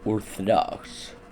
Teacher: This English word includes three instances of the same vowel (O), but each one carries a distinct sound, the first being a pretty standard English O, the second creating a ə sound as in uh, and the third producing the sound of an English A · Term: vowel reduction